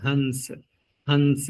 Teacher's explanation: अब अगले वर्ण का प्रभाव क्या पड़ेगा कि स हो रहा है दंत से उच्चारण स का, तो अनुस्वार का भी उच्चारण दंत से होने लगेगा, लिखने में अनुस्वार ही आएगा, हंस हंस, ऐसा लगेगा आपको कि नकार बोल रहे हैं हंस।